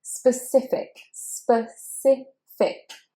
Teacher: That first E is said as schwa